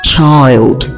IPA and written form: tʃaɪld (child)